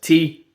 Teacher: tongue tip up. And it's just air. No phonation.